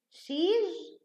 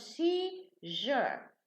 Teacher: And seize becomes seizure. So the za changes to ja.